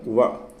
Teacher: దంత్యోష్టము దంతాలు తర్వాత పెదవులకు సంబంధించి వ అని పలకడం